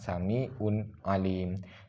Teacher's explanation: yang boleh adalah Samiun Alim contoh dari tanwin tanwin bertemu dengan salah satu huruf halqi huruf halqi yang di sini adalah Ain maka hukum bacaannya adalah jelas atau terang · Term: idhar halqi